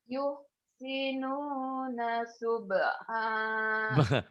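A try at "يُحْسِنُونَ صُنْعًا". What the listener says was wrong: bukan Mbak ini nun loh. Sun'a bukan sub'a Yuhsinu yuhsinuna sun'a.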